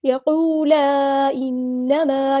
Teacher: नून पे गुन्ना ज़मानी हो रहा है, एक अलिफ के बराबर रुकेंगे